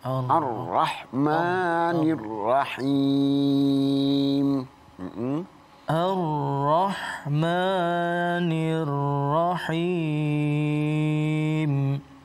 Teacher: ra-nya lagi tafkhim. Ar-Rahmanir-Rahim. Tafhim itu tebal ya. Tebal. Ya.